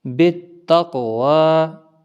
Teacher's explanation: بالتقوی، با تا زیر بت، تا قاف زبر تق، واو کھڑا زبر وا، بالتقوی۔ قاف حروف مستعلیہ بھی ہے اور اس کے اوپر آپ دیکھ رہے ہیں جزم، تو اس پر قلقلہ بھی ہوگا کیونکہ ساکن ہے، حروف قلقلہ میں سے بھی ہے۔